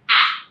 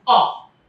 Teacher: Because A has the sound A. So mouth is wide opening. It's very, very different. A. As opposed to O. Mouth is closing.